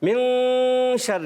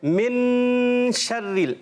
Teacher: من ناک میں آواز چلی جائے اور نون چھپ گیا, ٹھیک ہے، یہ غنہ کہتے ہیں اس کو.